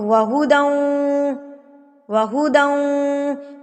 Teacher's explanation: جو غنہ ہو رہا ہے نا وہ 2 سے 3 سیکنڈ کا ہوگا. ناک میں آواز کو آپ نے 2 سے 3 سیکنڈ رکھنا ہے · تو ہم لوگ اس کو سمپل ملا ہی تو رہے ہیں. تنوین کو ہم واو کی تشدید کے ساتھ ملا رہے ہیں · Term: ادغام